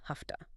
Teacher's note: because your mouth is already getting ready for that voiceless T, it's easier to make the sound before it voiceless, too.